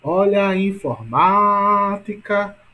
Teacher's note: ma é a mais forte, não é isso? Portanto, a sílaba tônica de informática é ma.